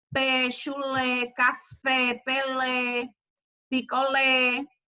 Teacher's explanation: oxítonas é a sílaba tônica é que é a última